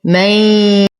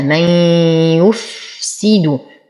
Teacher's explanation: نون ساكنة وبعدها الياء فهو إدغام يحتاج إلى غنة